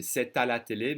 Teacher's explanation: If I say it slowly, I should connect the T with the next vowel and say c'est à la télé, but it's part of the few, of the many actually, the many liaisons.